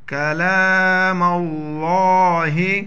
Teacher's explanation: لام کے اوپر یہ کھڑا زبر ہے ایک الف اوپر کھینچیں گے اس کو